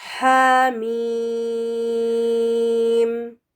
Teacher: ہا پر 2 کاؤنٹس دیں گے کیونکہ یہ 2 لیٹرڈ حروف میں سے ہے. اور اس کے بعد ہے میم جس کے اوپر مد بنی ہوئی ہے تو اس پہ 6 کاؤنٹس، ٹوٹل 8 کاؤنٹس ہوں گے.